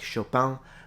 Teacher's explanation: the i n which in Parisian French is more of a ong like chopang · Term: Parisian accent